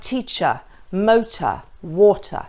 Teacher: we only pronounce the R sound in British English when it comes before a vowel